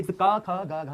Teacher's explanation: तो का वर्ग का जो उच्चारण स्थान होता है वो कंठ होता है। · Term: कंठ वर्ग